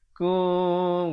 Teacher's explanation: Ikhfa syafawi dibacakan dengan kadar 2 harakat. Bibir itu dibiarkan renggang sedikit.